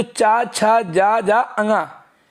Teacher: इनका उच्चारण तालु से होता है, यानी कंठ से थोड़ा सा ऊपर। आप पीछे की ओर जाएंगे गले के ऊपर तो हमारा तालु होता है।